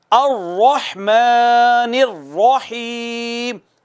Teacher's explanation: رحمان میں بھی اور الرحیم میں بھی را مفخم ہے، پر کر کے پڑھنی ہے